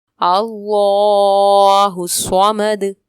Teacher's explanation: اللہ الصمد میں اسم جلالت اللہ عز و جل کے نام کو پر پڑھیں گے. صمد میں صاد حروف مستعلیہ میں سے ہے، پر پڑھیں گے اور دال میں وقف کی صورت میں کلکلا ہوگا.